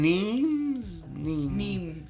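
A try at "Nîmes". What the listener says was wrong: Nimes no s. No s.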